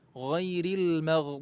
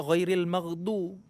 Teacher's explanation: makhrajnya itu pertemuan antara tepi lidah dengan pangkal gigi geraham atas boleh sebelah kanan boleh sebelah kiri boleh juga dua-duanya jangan sampai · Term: huruf Dod